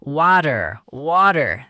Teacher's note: In American English, the T sound in the middle of words often softens to something close to a D or even disappears. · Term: American flap T